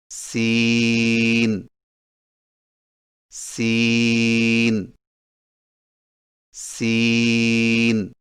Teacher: سین کی ادائیگی میں زبان کی نوک کو سامنے والے نیچے کے دو دانتوں کے کناروں سے مضبوطی سے لگا کر باریک اور سیٹی جیسی آواز میں پڑھیں